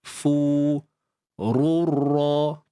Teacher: Fu ni muncung sahaja bibir dan panjangkan 2 harakat.